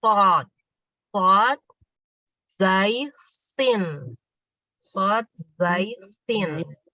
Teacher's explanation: Jadi dia itu memang ada desisan, berdesis. Tajamnya suara desis itu karena dia melewati celah sempit antara ujung lidah dengan gigi seri atas dan bawah. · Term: sofir